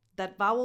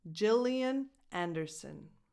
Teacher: That vowel before the N at the end is again a schwa